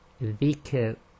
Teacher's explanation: When you end on a Sakin light Ra, it's very, very light. So you normally just do a very big smile at the end and it should be okay.